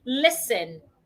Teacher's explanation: What I see a lot of people do is they change the s to a z and they say listen. The s should not be pronounced as a z. The s remains a s. The t becomes silent.